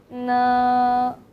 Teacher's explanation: So N is the nasal sound. You can feel the air come out from your nose.